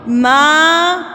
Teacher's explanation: میم کھڑی زبر ماں ایک حرف کے برابر لمبا